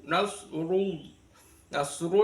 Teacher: Nasru itu rnya dibaca tafhim